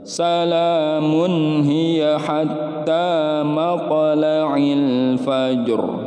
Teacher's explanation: Nah, ini huruf ro-nya ini dibaca juga kan tetapi disukunkan, dan juga cara membacanya ditebalkan, tafkhim, ra tafkhim ya